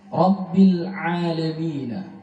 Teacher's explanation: ra-nya tebal, bil tipis. Al-alamina, a-nya dibaca satu alif.